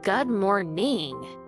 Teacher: stress the second syllable of morning